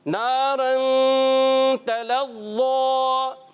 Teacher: حرف مدہ ہے، ایک الف کھینچیں گے · تنوین کے بعد دیکھیں دو زبر کی تنوین را کے اوپر ہے، اس کے بعد آگے تا حرف اخفا میں سے یہاں پر اخفا کا غنہ کریں گے